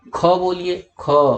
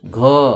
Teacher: अंदर गले के अंदर स्वर तंत्र होता है, वहां पे कंपन हो रहा है